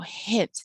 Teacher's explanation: has that eh sound in the middle, hint. It stretches out a little bit. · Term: stressed